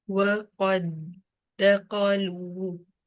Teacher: इस कॉफ को इस दाल से डायरेक्टली कनेक्ट किया और दाल को ट्वाइस पढ़ लिया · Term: मर्ज